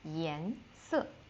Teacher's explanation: So 颜色 is color in general. 颜色, second tone and fourth tone, so go up and go down again.